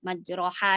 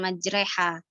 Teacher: Jadi tidak boleh ada imalah. Imalah di sini fathah yang dikasrohkan. Nah, huruf fathah yang dikasrohkan kan yang majreha itu kan aslinya majroha sebenarnya kan terus dibaca dengan majreha, diimalahkan kayak gitu maksudnya.